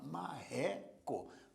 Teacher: Porque a sílaba mais forte é a penúltima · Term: paroxítona